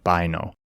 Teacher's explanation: in ancient Greek they pronounce it with a hard B and the I sound